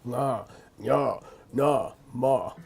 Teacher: Anytime you have a fourth column nasal, nganya nama, there's only 4 of them, nganya nama, very low tone